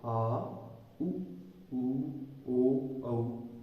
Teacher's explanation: इसके बाद है पश्च स्वर, यानी कि जीभ का पिछला भाग सक्रिय होता है